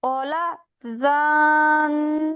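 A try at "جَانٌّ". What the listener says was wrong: আপু জিম শব্দ হচ্ছে না, যে জিম শব্দ।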